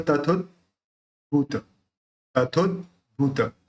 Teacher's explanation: स्वात्म नैव तदोद्भूत तथोद्भूत, तथो अद जो है वो आधा द है तो वो द अंदर मुंह में रहना चाहिए, ऊपर तालु के ऊपर से चढ़ के बाहर नहीं आना चाहिए